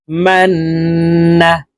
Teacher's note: আছে তো এই মিম তাশদি ওয়ালা নুনের সাথে নাকের পাশে থেকে তিন সেকেন্ড পরিমাণ গুন্না করে ধরে রাখবো